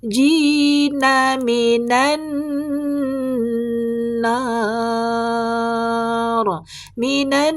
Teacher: non bertasdid, gunnah musyaddadah, dengung sempurna